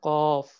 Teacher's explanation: জিহ্বার গোড়া তার বরাবর উপরের তালুর সঙ্গে লাগে উচ্চারিত হয় 2 নক্তাওয়ালা কফ। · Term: 4 নম্বর মাখরাজ